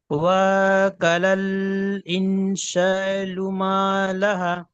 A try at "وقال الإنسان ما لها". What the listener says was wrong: তবে শুরু থেকে ওয়াওটা টান হবে না, কফটা টান হবে। দেখেন আমি একবার টান দিয়ে পড়ছি, ওয়াক, আপনারও হয়েছে, ওয়াওটা টান হয়েছে, ঠিক আছে। ওয়াকালাল ইনসানু মা লাহা।